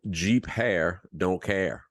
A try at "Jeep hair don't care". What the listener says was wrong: Hey, listen, I don't think you put a P on. It sounded like you said. It sounded like you said G hair.